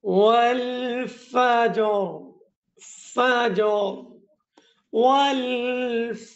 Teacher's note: জিমটাকে আগে কলকলা করতে হবে, পরে রাটাকে সাকিন করতে হবে।